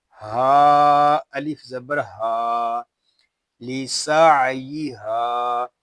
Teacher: یہ ہا جو ہے یہ حلق کے نیچے والے حصے سے ادا ہوگا. ہا کو ہم ایک الف تک کھینچ کر پڑھیں گے کیونکہ یہاں پہ الف مدہ ہو رہا ہے